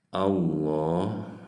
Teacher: Karena sebelumnya ada hamzah berharokat fathah, maka ini masuknya ke dalam bacaan ilmu tajwidnya lam jalalah tafhim. Jadi harus ditebalkan. Di atas huruf lam ada fathah berdiri, ini masuk mad tabi'i.